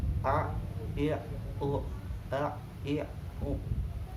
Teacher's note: Huruf ain yang pertama dia memiliki sifat jar, tertahannya nafas, tidak berjalannya nafas.